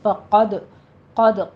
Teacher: قد قوف پر پڑھنا ہے، دال پہ قلقلہ کرنا ہے